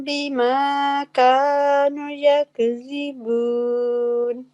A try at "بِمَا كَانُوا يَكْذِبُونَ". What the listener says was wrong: بیما کانو نہیں، نون کے آگے واو ہے نا، دوبارہ پڑھیں.